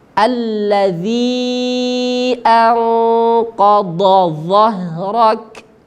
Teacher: ini huruf dhad keluarnya dari tepi lidah menyentuh gigi geraham atas